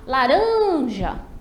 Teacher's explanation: eu percebo que eu demoro mais no rã. Eu não digo laranja, não. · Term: sílaba tônica